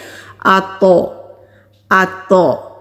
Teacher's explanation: بالکل اسی طرح تو جب ہم ادا کریں گے، کیونکہ تو ساکن ہے تو اس کی آواز بھی پلٹ کر آئے گی